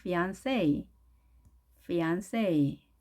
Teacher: 프랑스 말로 하게 되면 N 발음이 응 발음, fiancé 이렇게 하지만 영어로는 N 발음이니까요. N으로 합니다. fiancé, fiancé.